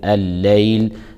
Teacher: اللام في الليل لام شمسية تدغم في اللام التي تليها فتلفظ لام مشددة